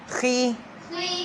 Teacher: خے مجہول نہ ہو، خی خی باریک بالکل، خی خی